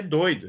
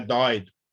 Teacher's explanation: Aí é doido, é fechado, não é dóido.